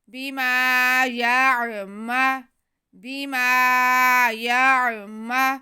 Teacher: آگے میم پہ زبر ہے، اسے بالکل نہیں کھینچنا